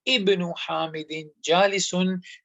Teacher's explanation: this hamzatul wasl, which is coming in the beginning of the word, there's nothing before that, will be pronounced